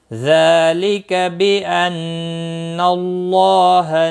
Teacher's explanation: ذال کے اوپر کھڑی زبر ہے، 1 الف کے برابر کھینچ کر پڑھیں گے، لکا کو کھینچنا نہیں